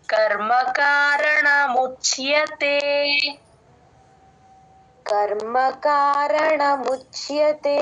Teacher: వత్తు పడిపోతుంది ముచ్్యతే అంటే ముచ్ plus య చ ప్లస్ య తీసుకోవాలి ఇక్కడ చ కి పొల్లు పెడతాం చ ని సగమే చెప్తాం ముచ్ యతే య ఫుల్ గా చెప్తాం ఆయ య అనేది క్లియర్ గా